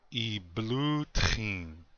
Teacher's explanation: Notice the guttural on the T